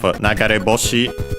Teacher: the accent of nagare boshi is on the final syllable of the first part of the compounds on re